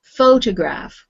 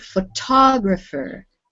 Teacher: The first word is photograph with the stress on the beginning. The second word, photographer, with the stress on the second syllable. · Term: stressed pattern